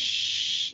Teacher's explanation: Tafashi bunyi shh. Itu bunyi berhamburan.